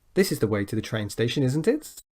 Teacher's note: environmental mistakes is it so notice the pronunciation here the intonation with a question we go up at the end with a question tag